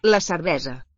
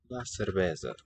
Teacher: Catalan writes the voiceless S, but sounds it as a voiced one.